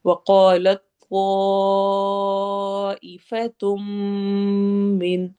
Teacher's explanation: وقالت طائفة من، تو پہ اچھی طرح سے مد کو لمبا کرنا ہے، ای ف تم پہ ادغام غنہ ہو رہا ہے، تنوین کے بعد میم آ رہا ہے، ہم یہاں پہ لمبا کر کے پڑھیں گے